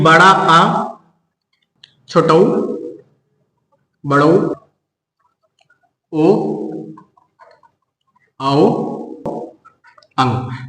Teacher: ये जीभ के पिछले भाग से बोले जाते हैं, इसीलिए इसको पश्च स्वर कहते हैं।